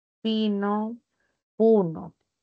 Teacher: Aquí la I es alta y la U también es alta. Así que ahí hay correspondencia.